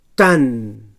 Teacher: So dental oclusiu sord.